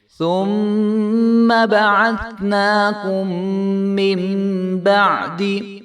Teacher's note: بعدی نہیں کریں گے اور نہ ہی بعدی کریں گے بلکہ عین کی آواز بھی آئے گی اور دال کو جو ہے ہم لمبا نہیں ہونے دیں گے